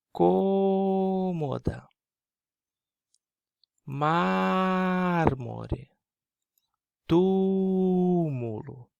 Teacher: A posição da sílaba tônica é antepenúltima. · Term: proparoxítonas